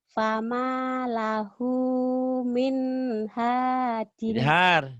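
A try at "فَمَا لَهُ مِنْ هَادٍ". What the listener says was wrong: Jangan ditahan. Fama lahu min hadin. Ayo jangan ditahan. Fama lahu min hadin.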